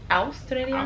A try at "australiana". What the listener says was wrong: You say it different every time. You get the middle right, and then you get the end right, and then you fuck up the beginning. Or you get the beginning right, and then you fuck up the middle.